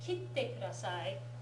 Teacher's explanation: Kitte kudasai, the ki is the higher pitch. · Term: pitch accent